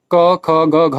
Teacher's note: कंठ और जिह्वा पश्च इसके द्वारा क ख ग घ उच्चरित होता है